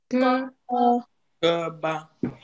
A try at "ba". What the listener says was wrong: Ah, c'est pas bas. Ça descend.